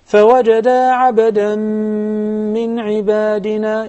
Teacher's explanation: It's very obvious that we have idgham with ghunna. We put a lot of emphasis on the ghunna. It should be two counts.